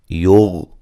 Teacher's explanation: غین کو موٹا لیکن ہلانا نہیں ہے